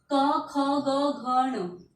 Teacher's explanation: ये सब इन वर्णों का उच्चारण किससे किससे किया जाता है? कंठ से।